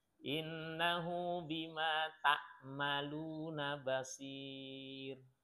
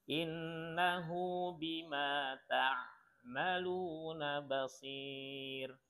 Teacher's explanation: perubahan makharijul huruf, ya, makhrajnya berubah antara hamzah ke ain.